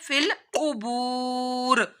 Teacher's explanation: قاف حروف مستعلیہ میں سے ہے، دو نقطوں والا قاف ہے، موٹا پڑھنا ہے. فل قبور واو ساکن سے پہلے پیش آ رہی ہے تو واو مدہ کرنا ہے.